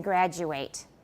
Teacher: if it is a noun or adjective we pronounce it with a schwa